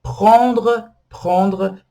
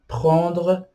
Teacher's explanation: Eu quero falar do R, que é muito forte, né? É um gargarejo, né? Que eu gosto de falar assim, gargarejo.